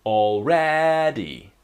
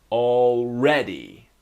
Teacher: the strong syllable is in the middle the second syllable